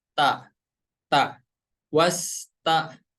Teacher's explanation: dari ujung lidah kita menempel ke tempat tumbuh gigi seri yang atas. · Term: huruf ta